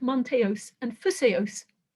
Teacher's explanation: Because of these odd words like manteos and phuseos, where we've got an omega, a long vowel in the final syllable, but nevertheless, the accent manages to be on the antepenultimate syllable. That's unusual for Greek, and it never happens when a word has an eta in its final syllable.